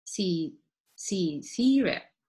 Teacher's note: So there is a schwa at the end.